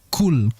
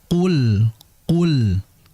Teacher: Yang betul qul. Karena qaf ini memiliki sifat jahar atau tidak mengalirnya udara, ya, tertahannya udara. Sehingga hati-hati qul, qala, qul, ya, sehingga tidak boleh dibaca kul.